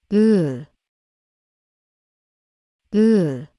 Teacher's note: see much more of the lower teeth than the upper ones the sound of uh is lowered and dulled and the corners of the lips look slightly down